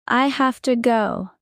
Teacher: Say it quickly like you're in a rush. The have to becomes hafta.